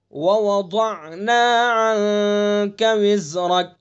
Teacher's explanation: ضاد کو اپنے مخرج سے تمام صفات کے ساتھ نکالیں گے، پر بھی کریں گے اس کو